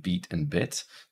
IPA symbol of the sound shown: i